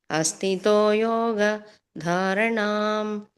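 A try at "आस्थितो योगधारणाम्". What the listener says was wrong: ಆಸ್ಥಿತೋ ಅದು ಆ ಬರುತ್ತೆ ಮಾತಾಜಿ, ಅಸ್ಥಿತೋ ಅಲ್ಲ, ಆಸ್ಥಿತೋ ಯೋಗ ಧಾರಣಾಂ.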